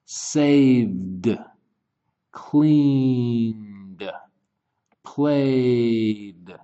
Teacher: is moving or vocal cords are moving inside the throat so these are voiced sounds which means the Ed is going to sound like d